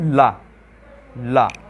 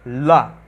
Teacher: ठीक है, ला का जब आप लोग उच्चारण करेंगे तब जीभ को ऊपर वाले, ठीक है, जीभ को ऊपर वाली दांतों की जो जड़ें होती हैं वहाँ पर लगाओगे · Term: पार्श्व